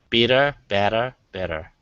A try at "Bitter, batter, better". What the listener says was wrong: That's good. That's good. You can give me a little more R at the end. Bitter, batter, better.